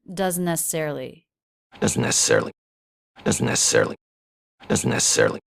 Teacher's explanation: He's sort of blending it, doesn't necessarily, with just one N sound and no stop.